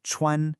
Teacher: Really listen to that high flat first tone.